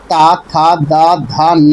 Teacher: पता है तवर्ग के वर्णों का उच्चारण का स्थान दंत है। दंत व्यंजन वे व्यंजन होते हैं जिनके उच्चारण में जीभ की नोक ऊपरी दांतों से छूती है। तवर्ग वर्ण के अंतर्गत ता, था, दा, धा, ना आते हैं।